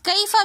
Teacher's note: یا ساکن اور سے پہلے زبر ہونے کی وجہ سے یا لین ہے، تو ہم اس یا کو نرمی کے ساتھ اور جلدی سے پڑھیں گے۔